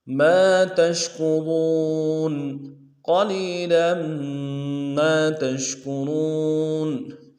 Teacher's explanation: تا کو شین کے ساتھ ملانا ہے، شین کو واضح کریں گے تفشی ہے، کاف کو نرمی سے ادا کریں گے، واو کو واو کے ساتھ ملانا ہے، واو مدہ ایک الف دال میں کھینچیں گے، نون کو نرمی سے ادا کریں گے۔